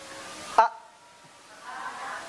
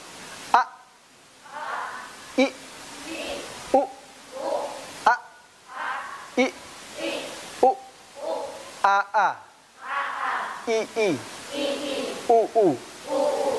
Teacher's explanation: Hamzah ketika disebutkan pita suaranya tertutup.